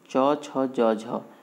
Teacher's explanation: तालू से ही बोलते हैं हम ना, जीभ हमारा जाके तालू में चिपक जाता है, तो इसलिए तालव्य व्यंजन बोलते हैं।